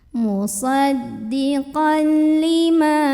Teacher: Ma mad tabi'i karena ada alif sebelumnya fathah, maka dibacanya mimnya panjang 2 harokat.